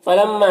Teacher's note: میم مشدد غنہ ہوگا اور الف مدہ ہے